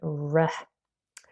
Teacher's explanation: you have the tip of your tongue rolled back this is why we call it retroflex R and the sides of the tongue also kind of move up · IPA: /ɹ/